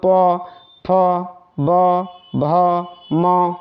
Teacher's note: देखिए आपका होठ क्या हो रहा है, स्पर्श कर रहा है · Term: ओष्ठ